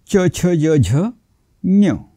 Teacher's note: संस्कृत मध्ये च छ ज झे च ला य लावून जसा उच्चार होईल तसा उच्चार केला जातो